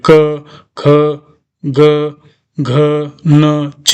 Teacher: क याच्या पाठीमागे कशाचा आवाज येतो आपल्याला अ सारखा आवाज येतो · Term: व्यंजन